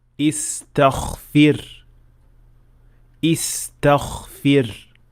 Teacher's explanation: some learners tend to make ghain also voiceless. The result is that it will sound more like kha rather than ghain, like in this word: istaghfir, istaghfir.